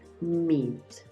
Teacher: sonido cuando tú veas en escritura dos e esta doble e la vas a pronunciar como una i pero no es un solo golpe de I vas a darle un poquito de continuidad a este sonido